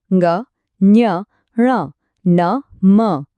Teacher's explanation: આ બધામાં અવાજ નાકમાંથી આવે છે એટલે જ એમને કહેવાય અનુનાસિક એમની આ ખાસિયત છે તો આ